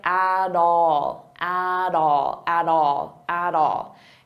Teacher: I'll pronounce that T as a soft D and it sounds like at all, at all, at all, at all.